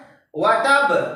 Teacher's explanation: हमारा बा का जो मखरज है, दोनों होंठ के मिलने से